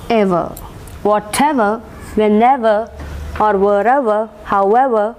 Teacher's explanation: stress will be marked on the ever